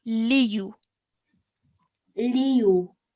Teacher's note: the U needs to only be stretched for 1 second, okay? Because it simply has a dhamma.